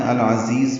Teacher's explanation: یہاں لام ساکن پہ اظہار قمری ہو رہا ہے عین کی وجہ سے. عین وسط حلق سے نکالیں گے. اس میں دو زا ہیں العزیز میں، دونوں زا تیز صفیر کی آواز سے ادا کریں گے.